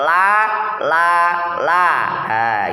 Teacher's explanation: pinggir lidah bagian ujung menempel pada gusi atas atau gusi pada gigi geraham bagian depan gigi taring dan gigi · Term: huruf lam